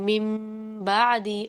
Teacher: نون ساکن ہوتا ہے اور بعدی با متحرک کے بعد پر زبر ہے، تو وہ جو نون کی آواز ہے وہ میم سے تبدیل ہو جاتی ہے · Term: اقلاب